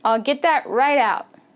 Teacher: you might notice there's no T.